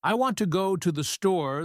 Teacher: Like in the sentence, I want to go to the store, the stress is on want, and store, everything else gets kind of mumbled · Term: stress-timed